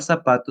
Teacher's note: la palabra zapato se pronuncia con s en lugar de la z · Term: ceseeo